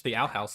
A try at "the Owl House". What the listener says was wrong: It sounds like you're saying outhouse,